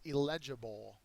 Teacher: illegible is an adjective the second syllable is accented